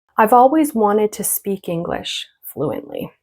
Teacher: Wanted to, and the two is going to turn into a ta, okay, ta sound. Unstressed.